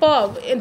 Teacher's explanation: जब आप प बोल के देखिए तो आपके दोनों ओष्ठ आपस में सटेंगे, इसलिए प का उच्चारण स्थान ओष्ठ को माना जाता है।